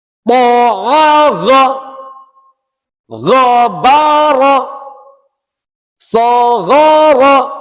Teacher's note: jangan sampai mengucapkan dengan diseret atau rasanya masih ada panjangnya